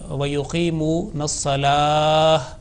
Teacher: lam, which is with vertical fatha, it should be prolonged